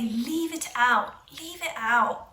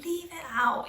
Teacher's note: we have a glottal stop at the end